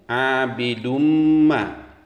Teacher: Dumma itu adalah idgham bil gunnah atau idgham berdengung. Setelah tanwin dhammah terdapat huruf mim, maka wajib dibaca dengung.